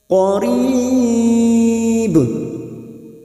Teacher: dibaca wakaf Mad Arif t sukun empat harakat kita panjangkan dan ujungnya jangan lupa dipantulkan karena ada huruf ba yang mati di akhir kalimat